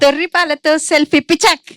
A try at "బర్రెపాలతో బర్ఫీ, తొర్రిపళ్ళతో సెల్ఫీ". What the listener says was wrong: తొర్రి పాలు లేదు, తొర్రి పళ్ళు. తొర్రి పళ్ళు.